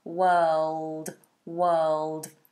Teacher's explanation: And you've got that dark L